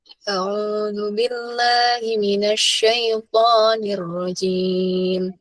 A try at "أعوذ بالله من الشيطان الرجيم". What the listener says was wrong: Coba istilahnya kalau jim jangan modok-modok jim. Nirrajim. Jangan modok-modok jim. Nirrajim.